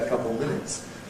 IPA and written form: ə ˈkʌpl̩ ˈmɪnɪts (a couple minutes)